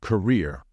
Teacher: in this word the stress should fall on the second syllable so it should be pronounced as career please be careful with